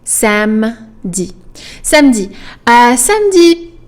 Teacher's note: We kind of skip that E. We just, as if there was just the M there.